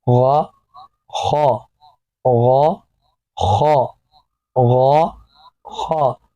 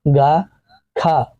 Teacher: حلق کا وہ حصہ جو منہ کی جانب ہے، اوپری حصہ، تو یہاں سے ان دونوں کی آواز ادا ہوگی۔ ان دونوں کی، ان میں خا اور ہا کی آواز میں فرق بچے کو واضح کیجیے، اور ان دونوں کی آواز موٹی پڑی جائے گی۔